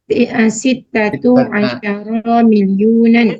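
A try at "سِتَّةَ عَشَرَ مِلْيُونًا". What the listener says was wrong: Sitata bukan sitatu. Sitata asyara milyunan.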